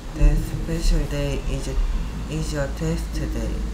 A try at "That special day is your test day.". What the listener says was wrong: 네, 자꾸 중간에 하고 멈추는데요. 그걸 hesitation이라고 하고요. hesitation은 익히 학습할 때 방해가 크게 됩니다. hesitation 없이 좀 하세요.